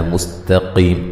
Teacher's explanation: تا کو باریک، قاف کو موٹا، قی یا مدہ ہے، وقفاً بڑی مد کے ساتھ پڑھ سکتے ہیں، ٹھیک ہے جی۔